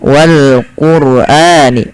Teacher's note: lafal Wal Quran rnya dibaca dengan tebal